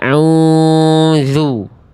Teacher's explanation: Karena yang A itu ainnya sengau. Ya, ainnya masuk ke dalam rongga hidung